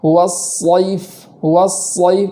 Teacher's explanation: صحیح طریقہ یہ ہے کہ سین کی طرح ہی آواز ہو، سین کی جگہ سے ہی ادا کیا جائے، صرف پور کا اضافہ کیا جائے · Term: صاد